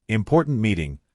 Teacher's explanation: Say important meeting with a sharp t at the end of important.